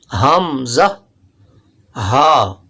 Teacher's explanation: حمزہ، ہا، یہ 2 حرف حلق کے انتہائی حصے سے ادا ہوتے ہیں، یعنی جو سینے کی طرف حلق کا حصہ ہے وہاں سے یہ 2 حرف ادا ہوتے ہیں، حمزہ، ہا۔ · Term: حروف حلقی